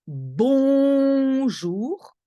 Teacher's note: the n after vowel you don't hear it it becomes something in your nose